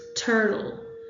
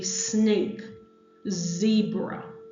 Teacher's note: the alveolar, which is the tongue tip plus the alveolar ridge. So this is the T, the D, the S, the Z, the N, and the L.